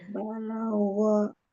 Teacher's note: Balagha bukan gha. Gha tebalkan huruf ghainnya.